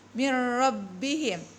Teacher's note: Tulisannya itu min ro, ada tasdid di atas huruf ro, mir rabbihim. Jadi tidak dibaca lagi nun sukunnya, langsung dibaca mir rabbihim ya. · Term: idgham bilaguna